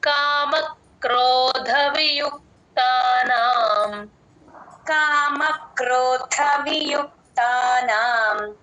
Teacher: కా ని జాయిన్ చేసి చెప్పండి కామ క్రోధ ద కి మహాప్రాణం ఉంది